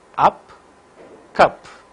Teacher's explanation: During the articulation of this vowel a, center of the tongue is raised to a position just below half open. This vowel will also occur only initially and medially.